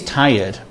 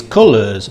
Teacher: The R is not pronounced.